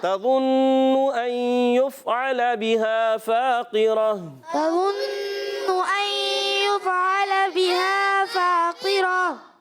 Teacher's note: قاف حروف مستعلیہ میں سے، زیر تو ہے باریک نہیں ہوگا